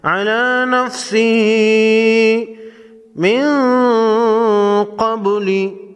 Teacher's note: قاف کو موٹا پڑھیں گے، نون ساکن پر اخفاء حقیقی ہوگا، با ساکن کو ہلا کر پڑھیں گے۔